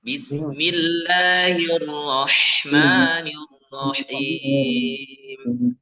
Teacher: H-nya dibaca ha yang dari tenggorokan tengah ya. Irrah ya. Bismillahirrahmanirrahim dari tenggorokan tengah-nya.